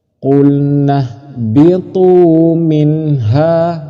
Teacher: Nun matinya harus jelas han-nya harus jelas tidak boleh samar-samar dan tidak boleh berdengung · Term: Idhar